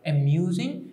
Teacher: amusing and the second syllable is stressed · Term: stress pattern